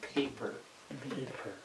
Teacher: that an aspirated sound because there is breath uh also our letter P is an aspirated letter if you're saying the P correctly